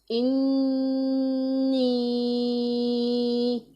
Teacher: نون مشدد آ رہا ہے، نون مشدد کو بھی 1 الف کے جتنا لمبا کرنا ہے، اور یا مدہ کو بھی 1 الف کے جتنا لمبا کرنا ہے۔